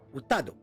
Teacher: dans le mot utado, qui veut dire professeur, l'accent tonique va aller sur le A, puisque rappelez-vous, le A est supérieur au U et au O, enfin au OU.